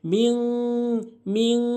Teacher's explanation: লোক এখানে মিন বলে এটি ভুল বলতে হবে মিম নাকের ভিতরে নিয়ে বলতে হবে গুন্না করতে হবে